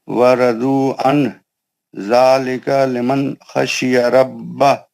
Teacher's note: تنوین کے بعد لام اور را یا تو نون کی آواز نہیں آتی. ادغام بلا غنہ ہے، وہ نون کا آواز آتا ہی نہیں.